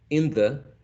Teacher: the tongue is a little bit lower, like closer to the teeth, the upper teeth, instead of the alveolar ridge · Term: dentalized